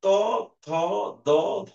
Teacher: তুমি এখনই প্র্যাকটিস করে দেখো যে ত বললে পরে বা থ বললে পরে জিভের আগাটা গিয়ে দাঁতের পিছনে গিয়ে টাচ করছে · কিন্তু তুমি এটাও একটু খেয়াল করে দেখো যে ত, থ, দ, ধ, তুমি এইটার উচ্চারণ করার সময় দেখো তোমার আহ জিভের যে অগ্রভাগ বা আগা যেটা, সেটা গিয়ে তোমার দাঁতের গোড়ায় গিয়ে টাচ করছে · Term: দন্তধ্বনি